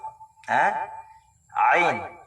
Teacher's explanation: Ang ain ay dito sa wasatul halq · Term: harf al-ain